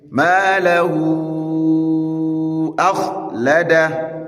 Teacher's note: this is maddu sila kubra, and it is expected that at least you draw it 6 harakat.